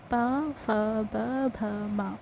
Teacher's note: पा वर्ग, जो हमारा होठ की सहायता से यानी ओष्ठ की सहायता से उच्चारित किया जाता है।